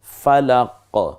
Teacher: জিহ্বার গোড়া থেকে একটু লাফিয়ে ওঠার মত